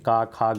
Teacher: तो का वर्ग का जो उच्चारण स्थान होता है वो कंठ से होता है